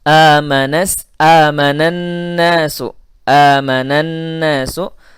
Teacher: Maka alif lamnya dinamakan alif lam syamsiyah. Bunyi nun pada amana langsung masuk kepada nun pada kata an-nasu.